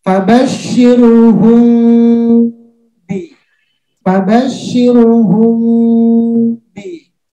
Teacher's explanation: Ada rongga sedikit, bibirnya tidak tertutup rapat. Kenapa? Karena kita ingin menyamarkan huruf ba. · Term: syafawi